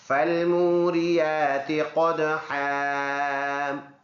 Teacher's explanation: قاف ان حروف میں سے ہے جو منہ بھر کر ادا کرنا ہوتا ہے، اور دال کے اوپر سکون ہے، دال حروف قلقلہ میں سے ہے جس میں آواز مڑ کے حرکت کر کے آئے گی۔ اور ہا کے اوپر 2 زبر ہے تو ادھر جب رکیں گے ایک زبر پڑھیں گے ایک سائلنٹ ہو جائے گا، ایسے بن جائے گا، فالموریات قدحا۔